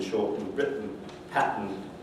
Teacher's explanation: the sequence tn as in shortened written pattern is generally realized with glottal stop